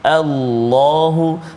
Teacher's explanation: Kadang-kadang di permulaan itu kita bertemu dengan lam yang terletak pada kalimah Allah. Kita panggil lafzul jalalah. Maka kat situ kita kena tebalah sebut, jangan Allah, Allahu kan.